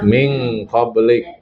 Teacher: Kemarin sudah saya terangkan kalau yang ketemu dengan huruf kaf itu cenderung ke eng. yang kau Ketemu kaf, ketemu qaf, sama ketemu fa. Itu cenderung ke eng. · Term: ikhfa